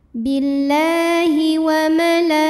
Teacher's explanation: La mad tabi'i muqaddar karena ada baris fathah tegak di atas huruf lam. Cara bacanya panjang 2 harokat.